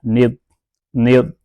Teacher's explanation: اب یہ جو الف درمیان میں آیا یہ نہیں پڑھا جائے گا، نون ضاد زیر ند۔ اب اس کو دال نہیں پڑھ دینا، اس کو ضاد پڑھنا ہے پر کر کے